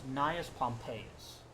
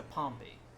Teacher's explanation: But when you drop the us, it goes to Pompey. The stress shifts from the second syllable back to the first. Because the ending kind of pulls the shift along with it.